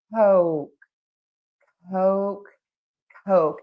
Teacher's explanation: In American English, we use the very long O.